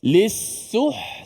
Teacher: Ha yang berada di tengah kerongkong kita, huruf ha.